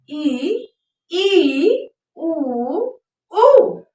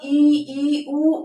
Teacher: जिन स्वरों के उच्चारण में मुख द्वार लगभग बंद रहता है उसे हम क्या कहते हैं, संवृत स्वर कहते हैं।